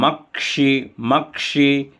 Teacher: जो है तो का और श मिलाकर के बनता है और वर्षा वाला जो सा है वह श रहता है जिसको मूर्धन्य श बोलते हैं